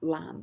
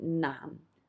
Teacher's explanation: that n and the l can be kind of interchangeable and most people you'll just hear the lam with an l sound but technically it should be nam which is an n sound